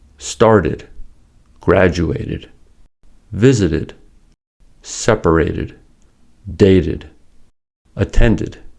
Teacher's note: And finally, if the verb base ends in a ‘t’ or ‘d’ sound already, then the ‘–ed’ ending sounds like “id” or “ud”. That is, it is pronounced as an extra syllable.